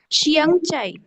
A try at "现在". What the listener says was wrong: না শিয়াং না, শিয়েন, শিয়েন, হ্যাঁ শিয়েন,